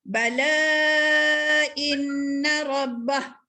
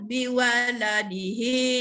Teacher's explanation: Kalau kita waqaf, tidak kita bunyikan harakat dia.